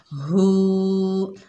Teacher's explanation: उल्टे पेश को एक अलिफ की मिकदार खींचकर पढ़ा जाता है हु। हा जो है सीने से अदा होगी इन्नहु।